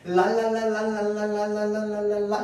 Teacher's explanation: 왜 흐름 소리라고 얘기를 하냐면 랄랄랄랄랄랄랄랄랄랄랄라 이렇게 발음하면은 자 입천장이 혀 끝이 닿았다 뗐다 하면서 공기는 어디로 나가느냐? 혀의 양쪽으로 새어 나갑니다.